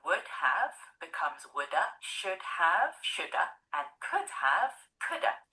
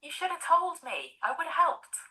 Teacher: the auxiliary have is often reduced to just a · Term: schwah